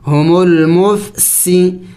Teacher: سین سیٹی والے حروف میں سے ہے، پڑھتے وقت منہ سے سیٹی کی آواز نکلنی چاہیے